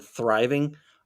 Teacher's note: there's a microscopic little break between the th sound and the rye sound and the ving sound